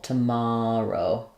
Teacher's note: in the word tomorrow uh we have the stress on the mar syllable